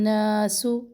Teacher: نون پر 1 الف کے برابر ٹھہرنا ہے، نا بھی 1 الف کے برابر ہے، تو دونوں پر ٹھہر کے آگے جانا ہے، جلدی سے نہیں پڑھنا.